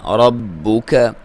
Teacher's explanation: را کو موٹا پڑھیں گے کیونکہ اس کے اوپر زبر ہے، با کو دبا کے پڑھیں گے، لیکن کاف کو بھی اور با کو بھی باریک پڑھیں گے۔